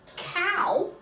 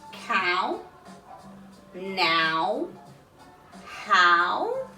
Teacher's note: the owl sound is actually a diphthong